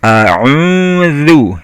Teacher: zal itu ujung lidah ketemu ujung gigi atas, kemudian ucapan zu, bibirnya dibulatkan, dimonyongkan biar bunyinya zu ya.